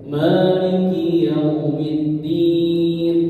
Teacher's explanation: Kemudian pada ayat berikutnya Maliki Yaumiddin, ya, maknya dibaca panjang